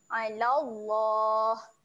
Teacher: Waktu sebut la tu kita kena panjangkan sebanyak dua harokat.